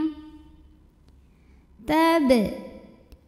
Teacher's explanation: Huruf ba-nya dihukumi dengan qalqalah sughra karena ada huruf qalqalah yaitu huruf ba yang sukunnya asli dan ada di tengah bacaan. Cara bacanya dipantulkan dengan pantulan yang kecil dan ringan.